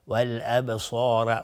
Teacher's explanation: صاد از حروف استعلاء غلیظ تلفظ میشه. الف هم تابع صاد غلیظ و را هم باز حکمش استعلاء میشه.